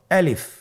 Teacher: আলিফ হরফটি মাখরাজ হলো আপনার মুখের শূন্যস্থান থেকে। গলা এবং মুখের শূন্যস্থান হতে আলিফ হরফটি উচ্চারিত হয়।